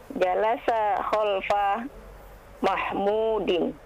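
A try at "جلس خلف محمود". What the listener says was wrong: Naam.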